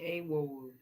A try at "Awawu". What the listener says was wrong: No, not a. Ah. Ah. The A is actually ah. Awawu.